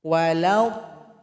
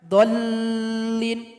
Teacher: Dipanjangkan dulu 6 harokat. Baru tasydid kepada huruf lam. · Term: mad lazim